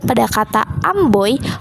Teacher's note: pada kata amboy, vokal yang digabung itu ada vokal O dan vokal I